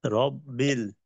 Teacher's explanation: তারপর রব্বিল, এইখানে কি কায়দা? রব্বিল, এখানে রয়ের উপরে জবর, র মোটা